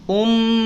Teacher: Mim bertasydid, lihat rumusnya 2 harokat idgham bi gunnah, baca dengung. Ya, 2 harokat idgham bi gunnah, dengungkan.